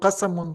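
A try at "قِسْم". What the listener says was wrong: Qism, exactly, qism, not qasam.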